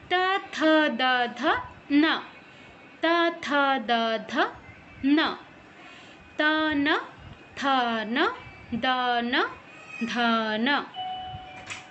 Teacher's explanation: ত বর্গের উচ্চারণ দন্তে, জিহ্বা উপরের পাটির দাঁতে লাগবে। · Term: ত বর্গীয়